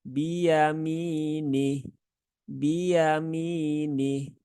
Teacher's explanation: Kemudian baknya, nah bak ini juga sering jadi perhatian ya, karena biasanya huruf ba ini kan sifatnya salah satunya adalah jahar ya, jahar. Maka ketika mengucapkan huruf ba itu tidak disertai dengan keluarnya udara. Maka jangan diucapkan dengan bi ya.